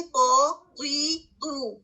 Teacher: قو میں کیا ہے کہ آپ کی زبان پیچھے سے اٹھے گی, آپ کی زبان کی جو نوک ہے آپ کے مسوڑوں کو ٹچ کرے گی, پہلے اوپر والے 2 دانتوں کے پیچھے جو مسوڑے ہیں ان کو ٹچ کرے گی, لیکن ہیوی ہو کر پیچھے سے جڑ کی طرف سے اوپر کو اٹھے گی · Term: ہیوی لیٹر